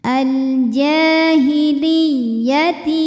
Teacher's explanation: dibaca menggunakan nabr Artinya kita tekan kita naikkan intonasi suara kita